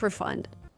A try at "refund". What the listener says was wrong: Refund? The word is not pronounced refund. I cannot say a cash refund. We have to put the stress on the first syllable and say refund, making the long E like green beans. Refund. You can say it's a cash refund, but not a cash refund. It's a cash refund.